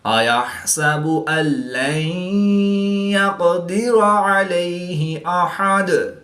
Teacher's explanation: یا ساکن سے پہلے لام پر زبر ہے تو یالین اس کو لمبا نہیں کریں گے۔ · قاف ساکن ہے تو یہاں پر قلقلہ صغریٰ کر کے پڑھیں گے۔